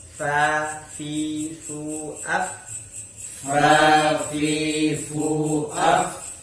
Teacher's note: Kemudian yang nomor 16 yaitu huruf yang menggunakan alat ucap bibir bawah dengan gigi atas, yaitu huruf fa